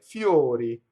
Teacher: Notice the semi-vowel before the O, and then the other ones are an actual vowel